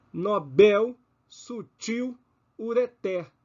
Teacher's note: Todas têm a última sílaba tônica. Portanto, nobel, sutil e ureter, todas têm o acento prosódico, o acento tônico na última sílaba.